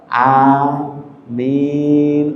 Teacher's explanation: Panjang A-nya dua aja, jangan a min.